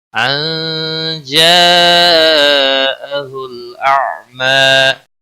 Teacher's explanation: نون ساکن کے بعد حروف اخفا کا جیم آیا ہے، اس لیے اخفا حقیقی ہوگا، غنہ کے ساتھ پڑھیں گے